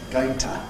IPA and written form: ˈgəʊɪŋ tə (going to)